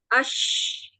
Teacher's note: Dia suaranya keluar dengan sempurna ya, Tidak ada bagian di mulut yang menghalangi keluarnya suara ketika melafazkan huruf shin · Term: rokhawah